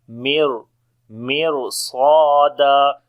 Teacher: Ra we read in heavy sound because whenever ra comes with sukun sign and if there is kasra before the ra and then after the ra sakin, if the next letter is a heavy letter, at that time we read ra in heavy sound because the swad is heavy after the ra · Swad and alif both we read in heavy sound, and when we stop, so this one fatha we read here.